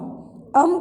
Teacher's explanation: अन्य मात्रा अनुस्वार, अम का उच्चारण करते समय वायु नासिका से निकलती है। अनुस्वार के मतलब होता है किसी भी अ के ऊपर बिंदी।